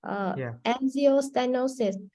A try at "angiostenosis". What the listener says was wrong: No, go back. You keep saying the angio. There's no Z in.